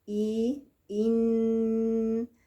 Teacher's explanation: عندي نون مغنونة بزمن حركتين